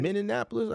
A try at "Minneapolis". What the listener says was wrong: you don't say all the ends now.